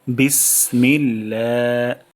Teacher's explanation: এখানে বিস সিন থেকে আমরা বাতাস বের করব। বিস, তারপর মিল্লা, এই লাতে আল্লাহ শব্দ, এখানে আমরা এক আলিফ টান দিব।